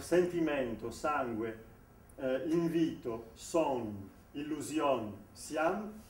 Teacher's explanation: à un moment donné, ce « n » ou « m », il commence à occuper la voyelle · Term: nasalisation